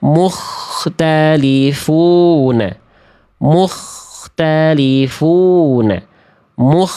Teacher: Nah, itu karena dilepas dirilekskan, jangan dirilekskan dulu. Dikontraksikan terus khnya si ujung tenggorokannya ya.